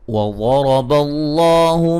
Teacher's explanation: غاد کو موٹا، را کو موٹا، لفظ اللہ کو موٹا